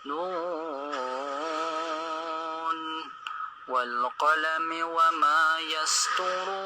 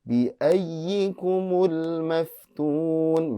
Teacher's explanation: Kemudian untuk bacaan saya hanya menyoroti di kalimat bi ayyikumul maftun itu ya-nya adalah ya tasydid ya, bukan idgham bi gunnah